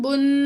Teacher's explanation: غنہ ناک میں آواز لے جا کر ٹھہرائیں گے